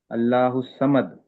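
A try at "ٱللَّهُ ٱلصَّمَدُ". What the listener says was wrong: దాల్ శబ్దం వెనక్కి రావాలి. అల్లాహు సమద్. ద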